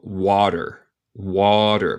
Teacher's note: aquí, en inglés americano, yo digo este T más como un R en español. A mí suena más como D.